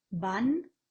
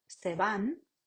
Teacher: Van es oclusivo, se van es fricativo.